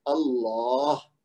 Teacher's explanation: آخری ہا کی آواز بھی نکالنی ہے اور لام کو موٹا پڑھنا ہے، اللہ. ہا کی آواز اپنی طرف سے نکال کے چھوڑ دینی ہے، کیونکہ اس کو ساکن کریں گے تو آواز آپ کو خود محسوس ہوگی کہ آپ نے ادا کیا ہے.